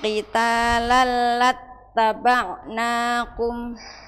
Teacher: lam itu namanya idgham bila gunnah tanpa gunnah